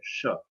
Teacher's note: दंती स इसलिए कि वो दाँतों के पास से बोला जाता है। स, और तालव्य ष इसलिए कि वो थोड़ा-सा बैक जाना पड़ता है, उसके लिए श।